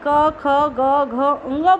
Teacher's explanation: जब देखिए आप क, ख, ग, घ, ङ बोल रहे हैं तो आपको अपने गले में ही ऐसा लग रहा है जैसे जीभ रगड़ खा के आ रही है, घर्षण करके आ रही है।